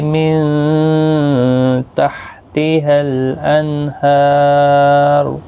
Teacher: ہا الف مدہ ہے، ایک الف کی مقدار کے برابر کھینچیں گے۔ لام ساکن کو ہلانا نہیں، نون ساکن کو بھی یہاں پر ہلانا نہیں، کیونکہ حروف قلقلہ میں سے نہیں ہے۔ ہا کے اوپر کھڑی زبر ہے، ایک الف کی مقدار کے برابر کھینچیں گے، اور را پر پڑھا جائے گا پیش کی وجہ سے، اس کے اوپر پیش ہے تو پیش اور زبر جب ہوتا ہے تو پر پڑھا جاتا ہے، ساکن جب ہوگا تب بھی پر پڑھا جائے گا۔